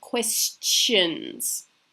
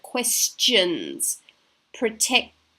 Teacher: Rather than if we had, for example, the letter A, and we had the word station, we hear Asian. The S and the C in these examples make a more pronounced T sound before we hit the shun. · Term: ch sound